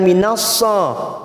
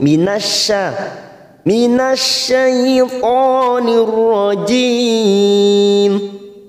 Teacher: Lalu ta'awud di sini memakai huruf shin, ya, bukan minassa, bukan minassa, ya. Minasya huruf tipis, shin huruf tipis, maka bibir kita tersenyum.